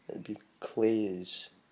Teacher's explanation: let that Z become more of an S as it comes out